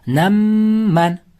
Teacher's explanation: Sukunlik mim harfidan so'ng yana bitta mim harfi kelib qolsa ikkita mimni birlashtirib g'unna bilan o'qiymiz. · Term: idg'om shafaviya